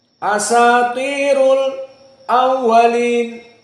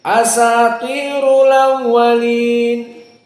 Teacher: hamzahnya dihapuskan maka di saat Hamzah dihapuskan harakat dari Hamzah tersebut dipindahkan kepada sukun yang sebelumnya maka jadilah istilah annaql dan ini khusus qir dari War an